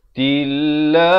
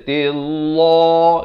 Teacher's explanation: Lafz jalalah ini dibaca nipis. Dua harakat.